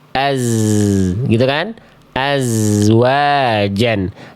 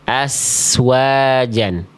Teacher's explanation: desisan huruf zai berubah menjadi desisan huruf sin